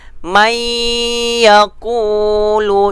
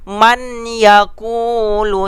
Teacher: Kalau idgham biguna ia adalah dengung. Dengung, bukan jelas.